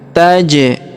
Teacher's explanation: Huruf ja berharokat sukun kita pantulkan.